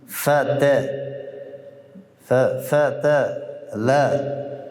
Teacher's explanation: حرف تا را می‌بینی حرف شدید است و مهموس